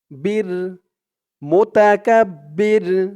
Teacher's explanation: কে ধরবে রুল জাব্বারুল আজিজুল জাব্বারুল মুতাকাব্বির মুতাকাব্বির এই চিহ্ন হতে থামার কারণে র উপরে পেশটা সাকিন হয়ে গেছে